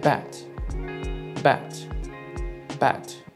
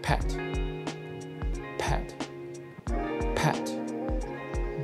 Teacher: the difference is that b is a voiced consonant while p is an unvoiced consonant the sound of a voiced consonant comes